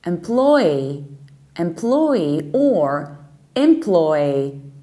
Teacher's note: still stressing plo, so the second syllable